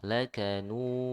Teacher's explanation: Kalau huruf sebelumnya tipis, madnya juga tipis, ya. Karena di sini sebelumnya ada dhammah dan cara pengucapan dhammah itu dimonyongkan, maka madnya juga ikut monyong